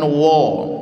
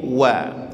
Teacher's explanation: di wau jangan ditebalkan jangan wo tapi wa